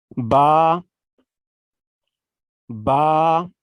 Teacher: دونوں ہونٹوں کے اندرونی تری والے حصے کو ملانے سے با ادا ہوتا ہے